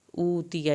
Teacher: یا کی زبر کو لمبا نہیں کرنا